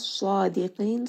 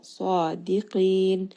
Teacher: Minas sadiqin, sad is going to be heavy. Dal is light. Qaf is heavy. So make sure the dal is not becoming heavy as well.